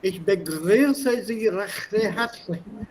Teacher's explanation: The H is very, very strongly pronounced in Schweizerdeutsch.